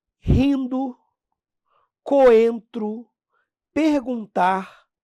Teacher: na proximidade do M, do N, você acaba nasalizando a vogal